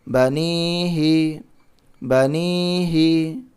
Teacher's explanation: با زبر با، نون یا زیر نی، بنی، حاضر ہی، بنیہی بنیہی، یہاں پہ زبر ہے، نہیں کھینچنا، یہاں پہ زیر ہے، نہیں کھینچنا، یہاں پہ یا ساکن سے پہلے زیر ہے تو نون کو یا میں ملائیں گے اور نون کو تھوڑا کھینچیں گے کیونکہ یہاں پر یا مدہ ہے